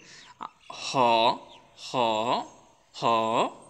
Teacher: পারবেন এখন দেখে নেন এগুলো কীভাবে উচ্চারণ করে এটা হচ্ছে হ হ শব্দটা গলার একদম ভিতর থেকে উচ্চারণ করবেন